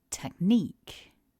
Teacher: this is a two-syllable word and that the stress is on syllable 2. So focusing on that stress, repeat after me.